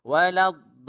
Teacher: Huruf dad ramai yang baca dengan makhraj huruf dal yang ditebalkan. Huruf dal yang ditebalkan ialah dengan menggerakkan hujung lidah pergi kepada belakang gigi atas.